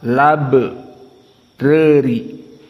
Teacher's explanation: labrari hamzahnya dihilangkan, yang tersisa fathah dimasukkan kepada lam yang ada sebelum hamzah yang dibuang. Maka lam yang sukun al menjadi fathah, lab reri. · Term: naql